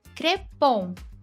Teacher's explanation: crepon tônica na última, ou seja, oxítona.